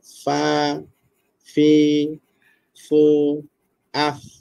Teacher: dalam kalimah tu ada empat fa, empat kalilah penekanan bibir bawah itu ke gigi kancip atas